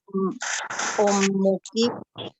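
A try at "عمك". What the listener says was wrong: Ummu atau am? Iya, kalau ummu itu ya pakai hamzah gini kan.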